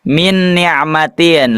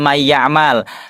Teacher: Berarti yang harus kita garis bawahi bilamana sebelumnya nun sukun atau tanwin bertemu dengan di antara yang empat ini ya nun mim ee ya nun mim wawu maka dibacanya dimasukkan ke huruf selanjutnya dan juga didengungkan dengan sempurna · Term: idgham bigunah